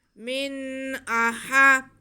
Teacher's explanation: हम नून की आवाज़ को वाज़े करके पढ़ते हैं और हमज़ा को वाज़े करके पढ़ते हैं। यहाँ पे इजहार का कायदा होता है, यानी कि वाज़े करना।